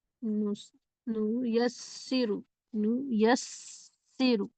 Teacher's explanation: سین میں سیٹی کی آواز باقی رہے